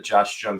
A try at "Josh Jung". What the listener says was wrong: Yeah, Josh Young, not bad. Yeah, no, it's Young, like Carl Jung, So it's a J, but said like a Y.